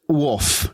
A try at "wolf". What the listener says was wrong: It sounds like he's saying woof. Just woof.